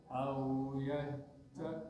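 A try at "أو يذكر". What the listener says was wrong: Nah, bukan zak, za. Au yazak, za. Yazak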